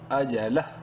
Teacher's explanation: وقفاً ہا کی الٹا پیش اڑ جائے گی، لام ہا سے مل جائے گا